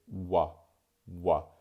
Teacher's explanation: So I say W, W. You can hear that the W sound is almost kind of preceded by an oo sound